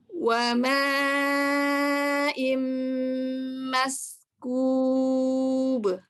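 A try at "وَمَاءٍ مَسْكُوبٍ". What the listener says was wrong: Ya, alirkan sinnya, tidak diputus, tidak maskub, tapi maskub.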